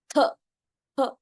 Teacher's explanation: थ, थ इसका जानने का तरीका होता है, दोनों दांतों के बीच में टंग आती है.